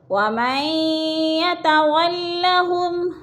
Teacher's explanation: وَمَن يَتَوَلَّهُمْ، ادھر ادغام ہو رہا ہے، نون ساکن لکھنے میں آتا ہے، پڑھنے میں نہیں آتا۔ مشدد حرف کو پچھلے میم کے ساتھ ملا کر پڑھیں گے، یعنی ادغام کریں گے میم کو یا کے ساتھ ملا کر۔